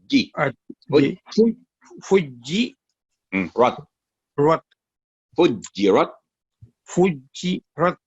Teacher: रुके ना उसके ऊपर थोड़ी देर, जी को लंबा नहीं करना। जी के नीचे कसरा है, 1 सेकंड।